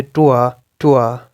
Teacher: British जो है वो लास्ट आर को मोस्टली प्रोनाउंस नहीं करते हैं एंड अमेरिकन करते हैं।